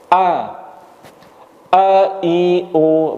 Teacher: Baik, sifatnya yang pertama tertahannya nafas. Pada waktu melafalkan A, tidak ada hembusan udara sedikit pun.